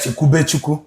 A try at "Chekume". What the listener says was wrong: Chekume, not be.